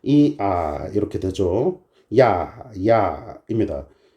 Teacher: 모음이라는 거예요로 시작하는 단모음 아까 살 들어 들렸죠 이야이야 발음을 해보시면 이 소리로 시작한 다음에 아 계속 발음하면 아만 남는다는 걸 아시게 됩니다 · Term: 이중 모음